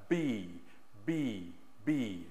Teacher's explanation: teeth over the the bottom tongue bottom lip the V and the B with the lips are together and the sound is being pushed out b b b okay and again just over just to review